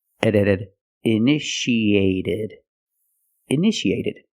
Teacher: the second T is between vowels so we pronounce it like a fast D